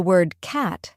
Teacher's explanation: the word cat has a broader a sound compared to British English